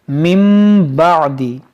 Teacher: नून साकिन के बाद यहाँ बा है, तो यहाँ पर इक़लाब होगा। इस नून को नहीं पढ़ेंगे, इस मीम को पढ़ेंगे।